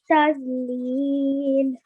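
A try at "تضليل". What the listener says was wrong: Okay, this time try not to say the Z sound in here. Just try and say Dod. That's the sound we're going for. Please remember your round mouth letters.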